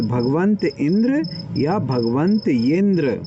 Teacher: आ के बाद विसर्ग, विसर्ग के बाद ई है, तो विसर्ग से इसका लोप, विसर्ग का लोप अथवा या, ये चीज हो जाएगी। तो भगवंत इंद्र या भगवंत यिंद्र, इनमें से दोनों पॉसिबल हैं, दोनों हो सकते हैं।